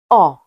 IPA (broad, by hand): ɒ